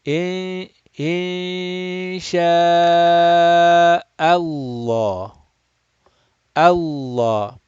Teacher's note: we are going to recite this lam of Allah mufakham, rounded, heavy, full mouth.